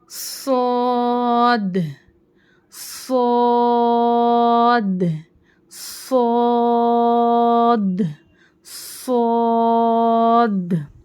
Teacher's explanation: सीटी की आवाज आना और उसको मोटा पढ़ना स य सी की की वजह से रफ मुस्लि हो गया · اس صاد میں سیٹی کی آواز آنا اور اس کو موٹا پڑھنا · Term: रफे सफीरा, حرف صفیرہ